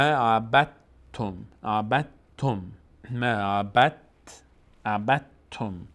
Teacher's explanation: دال کلا تلفظ نمیشه، تبدیل شده به حرف ما بعدش ت و ت تشدید گرفت. به همین خاطر ب رو ما مستقیم میچسبونیم به ت، اصلا دال رو تلفظ نمی کنیم، میگیم ما عبدتم، عبدتم، ما عبدتم.